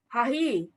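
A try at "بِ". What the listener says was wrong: Bizip. Kenapa ha lagi? Sudah ada huruf jar. Bizip. Iya itu makanya masih salah.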